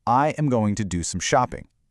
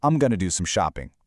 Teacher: in standard connected speech, I am going shrinks and links into I'm gonna.